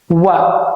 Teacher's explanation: biasa kita baca huruf wau dengan mulut yang agak dimonyongkan